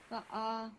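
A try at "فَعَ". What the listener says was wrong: Fa'a. So don't stretch one more than the other, because that's wrong. Okay, both of them have fatha, so both of them for 1 second each.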